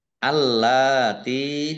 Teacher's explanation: lamnya dibaca dobel ada tasdidnya